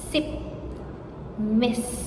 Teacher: Next is group B, alveolar fricatives. Sip, miss, voiceless.